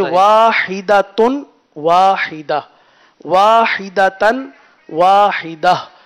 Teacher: گول تا کو وقف میں ہا سے بدلتے ہیں